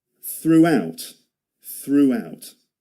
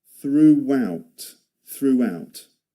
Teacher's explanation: See the W sound in the middle of that? Throughout.